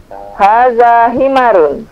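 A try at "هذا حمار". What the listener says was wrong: Bagus, memnya dipanjangkan sedikit. Haza himarun.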